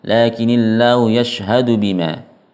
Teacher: Kalau berhenti lakin jelas enggak bertasydid tanpa disertai dengan gunnah yang panjang